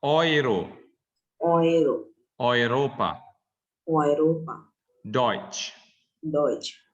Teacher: EU wird dann als OI, OI gelesen. Bacanya OI.